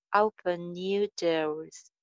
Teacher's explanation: Open ka ending na aur next word ka jo na hai unko alag alag jo hai articulate karne ki bajaye hum aapas mein link kar denge